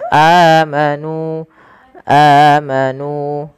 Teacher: ada hamzah bertemu dengan huruf mad, maka ia kita namakan dengan mad badal. Panjangnya adalah dua harakat.